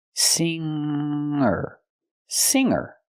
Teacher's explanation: I cannot pronounce the G sound the hard G in this word I have to use a nasal Sound